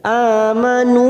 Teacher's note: a fathah berdiri atau Alif kecil dua harakat kita panjangkan